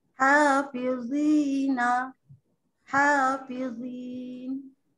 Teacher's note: Memang tebal bunyi dia. Kalau nipis jadi zal nanti. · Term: huruf tebal